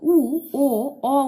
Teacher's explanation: এই তিনটে স্বরধ্বনি উচ্চারণ করার সময় হস্য ও অ যেমন আগেরটা প্রসারিত হচ্ছিল, ঠোঁটটা আমাদের ছড়িয়ে পড়ছিল, কিন্তু উ ও অ উচ্চারণ করার সময় ঠোঁটটা একদম কুঁচকে যাচ্ছে, অনেকটা ছোট হয়ে যাচ্ছে, তাই এগুলোকে আমরা বলবো কুঞ্চিত স্বরধ্বনি।